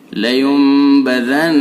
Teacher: تو لینبذن، نون ساکن کے بعد با ہے، لینبذن، नून मुशद्दद है, इसके अंदर हर्फ गुन्ना होगा, यानी गुन्ना होगा, एक अलिफ के बराबर, नाक में आवाज ले जाएंगे